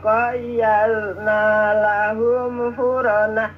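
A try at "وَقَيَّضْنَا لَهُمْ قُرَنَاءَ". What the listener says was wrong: pakai qaf ya, Wa qayyadna lahum qurana'a.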